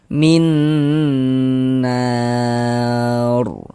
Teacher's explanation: Nah, makanya kita baca min, kemudian digunnahkan. Jadi bagian minnya itu suaranya itu kita tahan, kita panjangkan saja, kira-kira sepanjang 2 harokat. · Nah, kita tahan suaranya. Min, nah kita gunnahkan, kita dengungkan, kita panjangkan sebentar. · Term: idgham bi gunnah